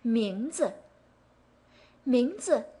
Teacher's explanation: 名 is the second tone, 字 is a neutral tone, quick and easy.